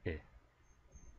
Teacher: sound it's almost as if we're making the e sound but we want the sound to be shorter and we don't want our mouth to be as tense as it usually is so relax your mouth and say I make it very short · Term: LAX vowel